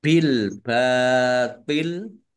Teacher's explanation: Lamnya dibaca sukun karena wakof dan dibaca pendek wakofnya karena tidak ada tanda panjangnya. Bil batil toknya agak berat ya, jangan sama dengan tak